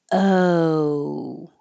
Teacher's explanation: And then it moves to an oo sound. So the lips slowly round, and the back of the tongue goes higher. So oh. Oh, when you finish, to test if you're in the right position, if you keep making sound, it should sound like an ooh.